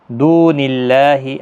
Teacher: اللہ کا لام زیر کی وجہ سے باریک پڑا جائے گا، کھینچنا بھی ہے ایک الف کی مقدار کے برابر، کھڑا زبر کی وجہ سے۔